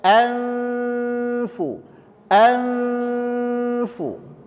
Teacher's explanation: makhroj Fa itu adalah ujung gigi seri atas ditempelkan ke bibir bahagian bawah yang basah · Hamzah Nun dan Fa Itu adalah huruf tipis Jangan dibaca jadi tebal